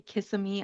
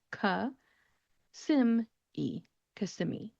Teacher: That middle syllable is the one that you're going to stress, which means that the I at the beginning of the word, the kiss part, you're actually going to take that and turn it into that schwa vowel sound. So it becomes ka, sim, e, Kissimmee.